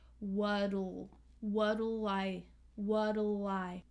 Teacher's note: The L links with the I.